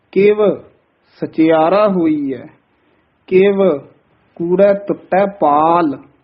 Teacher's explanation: ਦੋਵੇਂ ਜਿਹੜੇ ਕਿਵ ਪਦ ਹਨ ਇਹਨਾਂ ਤੇ ਯਮਕ ਲਾ ਕੇ ਉਚਾਰਨ ਕਰਨਾ